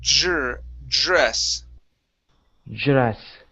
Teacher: Use a J sound instead of a D sound.